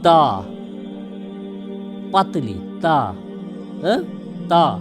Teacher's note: ان تینوں کا مخرج زبان کی نوک اور سامنے کے اوپر کے دانتوں کی جڑ ہے